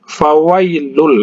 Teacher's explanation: langsung masuk ke huruf lamnya tanpa didengungkan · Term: idgham bila gunnah